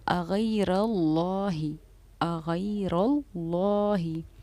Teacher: लफ्ज़ अल्लाह के नाम को हमने पुर यानी कि मोटा पढ़ा है।